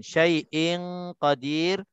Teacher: Tanwin bertemu dengan huruf qaf. Hukumnya ikhfa haqiqi, dengung 2 harakat.